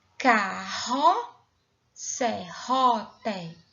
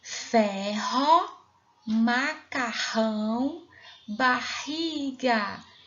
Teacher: O R tem um som forte que sai pela garganta e está no meio de duas vogais. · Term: R com som forte